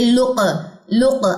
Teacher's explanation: लाम की पेश को काफ से मिलाते हुए काफ पे कलकला कीजिए